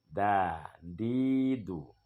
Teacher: tempat terbit hurufnya yaitu ujung lidah kita menyentuh dengan urat gigi atas. Artinya dinding di gigi bagian dalam, gigi seri. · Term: huruf dal